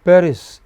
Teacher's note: Paris in English is stressed on the initial syllable.